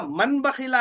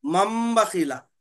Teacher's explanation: लिखे हुआ मन बखीला है, मगर पढ़ेंगे मम बखीला।